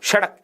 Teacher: और उसमें भी नोट करना, जिह्वा का ऊपर का हिस्सा मसूड़े को नहीं छूता, जिह्वा उल्टी हो जाती है। जिह्वा का नीचे वाला हिस्सा, जिह्वा की उल्टी नोक ऊपर वाले मसूड़े को छूकर झटके के साथ नीचे गिरती है। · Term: उत्क्षिप्त